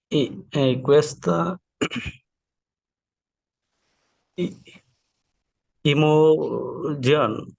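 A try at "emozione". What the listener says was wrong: ই না, এটা হবে এ, এমো, এমো জান্নাজ, এমো সিওনে, আবার এখানে লাস্টে সিওনে আছে, তো সিওনে থাকলে লাস্টে জ্যাটের উচ্চারণ কি হবে, জ্বর উচ্চারণ করবে, এমো সিওনে।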